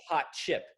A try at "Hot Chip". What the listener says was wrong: And you really hit the hot.